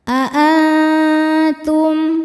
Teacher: Aantum a ada hukum ikhfa hakiki aqrab karena nun sukun bertemu dengan huruf ta. Cara bacanya nun disamarkan menuju ta disertai dengung. Dengungnya sedikit.